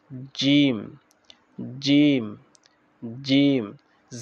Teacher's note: পড়বো জিম জিম জিম জায়ের যেরকম আমাদের বাতাস বের হয়ে যায় জিমের বাতাসটা বের হবে না জিম নরম ভাবে